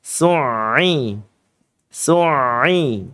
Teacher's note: ini sifatnya adalah tawasud. Maka pengucapan huruf ain bukan dengan cara yang seperti syiddah ee berhenti sejenak.